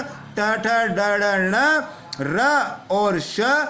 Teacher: ट वर्ग के पांचों वर्ण ट, ठ, ड, ढ, ण, र और श, और साथ में ऋषि वाला, ये मूर्धा से उच्चारित होते हैं